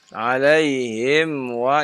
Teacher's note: mim bertemu dengan fa ya. Tidak terjadi ikhfa tapi izhar ya. Jangan ditahan terlalu lama